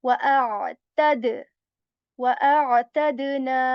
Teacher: Again, we will bounce back the sound. The sound of dal will bounce back. There will be echo in it. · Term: kalkala sound